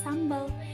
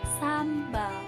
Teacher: ini kesalahan terjadi pada kata sambel yang seharusnya sambal aja nih disini terdapat perubahan fonem yaitu vokal eh menjadi a